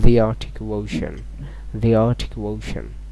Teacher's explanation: যখন এই দা এর পরে কি আসবে, ভাওয়াল থাকবে, ভাওয়াল উচ্চারণ হবে, তখন এই দাকে দি উচ্চারণ করতে হবে